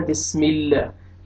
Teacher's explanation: یہ مڈل میں اللہ تعالیٰ کے نام میں جو یہ مڈل میں لام ہے اس سے پہلے آپ نے دیکھنا ہے کہ حرف پہ فتحہ ہے اور ضمہ ہے تو لام کو اپنے موٹا کر کے پڑھنا ہے، کسرہ ہے تو لام کو بریک کر کے پڑھنا ہے